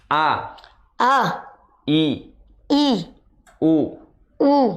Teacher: rasakan sumber suara ada di tenggorokan bagian bawah sini